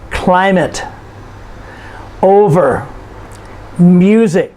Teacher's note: These are 2-syllable nouns, and you notice we stress the first syllable.